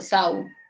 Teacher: Cuando se presenta una vocal fuerte como la A y una vocal débil como la U, estas se van a juntar. Entonces ahí tienes un solo sonido, sau. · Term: diptongos